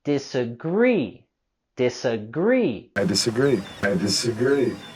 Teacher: With the word disagree, we're going to raise our voice and intonation on the last syllable.